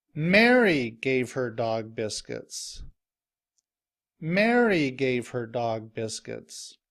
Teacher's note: Mary gave her dog biscuits. When I say the name Mary, I say it louder and longer, and my voice is higher. And I stress Mary because I want to emphasize who is giving her dog biscuits. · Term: stress is on Mary